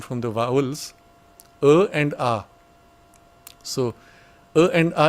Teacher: uh and a is not a distinguishable sound